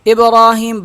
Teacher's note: ابراہیم با پہ قلقلہ کیا جائے گا